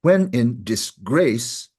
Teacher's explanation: instead of unstressed stressed we've done stressed unstressed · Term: inversion